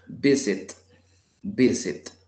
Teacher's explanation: el acento, yo se lo escucho al inicio, visit, porque si lo tuviera al final, aquí en sit diría visit, visit, pero no, siempre se pronuncia visit, visit, visiting, visiting, visiting, in the first syllable, en la primera sílaba, visiting.